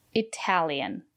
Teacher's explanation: The syllable after the letter T is stressed. We pronounce the letter T as T.